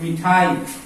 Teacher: अब यहां देखिए, मीठा हम बोलते हैं मीठा, मीठा, तो हम ई पर जोर देते हैं, लेकिन जब हमको मिठाई लिखना होता है तो हम लोग क्या करते हैं, हम लोग मिठाई, हम मी को जल्दी बोल जाते हैं तो हम इसके उच्चारण में कम समय लगाते हैं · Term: ह्रस्वी